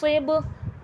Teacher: با میں قلقلے کی صفات واضح ہوگی، آواز پلٹ کر سنائی دے گی.